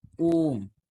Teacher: प्लुत स्वर में लगभग तीन गुना समय लगता है